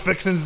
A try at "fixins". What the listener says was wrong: There's no G. Fixins.